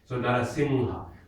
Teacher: when we do singha, then the N we give it is the nga N.